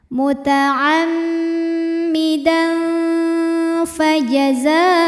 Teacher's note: Karena ada tanwin fathah yang menghadapi huruf fa. Maka tanwin dibunyikan samar-samar, siap-siap menuju makhraj huruf fa disertai dengungan. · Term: ikhfa awsat